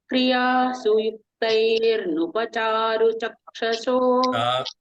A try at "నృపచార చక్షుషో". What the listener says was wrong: చార చారు కాదు చార.